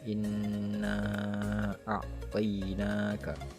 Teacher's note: suara tipis dan merdu yang keluar dari rongga hidung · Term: gunah